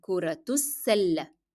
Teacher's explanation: And because I'm going to connect it with the following word, I pronounce the ta مربوطة as in the sound of t, and I pronounce as well the short vowel dhamma.